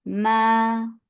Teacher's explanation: two counts long and without kunna